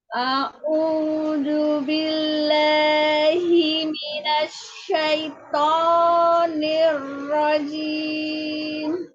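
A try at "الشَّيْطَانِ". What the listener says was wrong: To-nya jangan naik. To. Tidak. To. Eyang, jadi to itu menaikkan suara ke langit-langit. Bukan naik, apa ya? Bukan naik tonnya. Apa sih kalau ton itu ya? Kalau misalnya do, re, mi, fa, sol, la, itu bukan naik itunya. Tetapi naik suara ke langit-langit.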